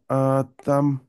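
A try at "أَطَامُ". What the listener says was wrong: আতাম, মুতে টান নাই, আতাম।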